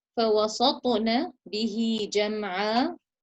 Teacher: So the ta has to be recited with qalqala, the ta sukun.